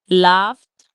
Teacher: So laughed will also have the sound like T at the end.